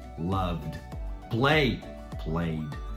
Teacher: Terminou com um som vocalizado. Vocalizado, que não é T ou D, né? Tipo love, coloca só o som de D.